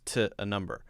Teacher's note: That's a common thing for all native English speakers to have this sort of shortened, it's called a schwa sound, shortened O sound when we say to.